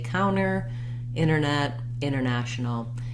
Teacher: often when we have nt in the middle of words american speakers will just leave the tea out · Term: no t sound